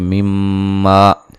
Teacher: मीम मुशद्दद पे गुन्ना ज़रूरी है